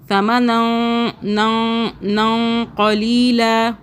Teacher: کا حرف ہے، اخفاء کا مطلب چھپانا، تو ہم اس لیے ہم قاف سے پہلے والا جو نون ساکن ہے اس کو ہم چھپا کے پڑھیں گے، 2 سیکنڈ کے لیے ہولڈ کریں گے چھپا کر